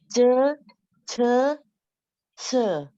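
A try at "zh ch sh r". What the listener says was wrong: Bu, bunyinya benar. Pronunciation-nya udah benar ya. Cuma nadanya. Jadi nada itu nada satu ya.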